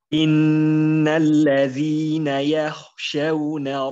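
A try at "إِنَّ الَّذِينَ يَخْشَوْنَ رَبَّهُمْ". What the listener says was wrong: Pokoknya kurang tebal. Yakhshawna. Ingat di sini berlaku marotibut tafkhim ya. Marotibut tafkhim baik itu mazhabnya mazhab Ibnu Jazari ya. Kalau Ibnu Qahan dia enggak memasukkan. Ibnu Jazari masukkan sukun itu ya masuk ke kategori tafkhim yang memang nomor 3 ya. Tetapi tetap kelihatan gitu ya. Yang yakhshawna. Innalladzina yakhshawna. Jadi tetap jelas apa takrimannya gitu.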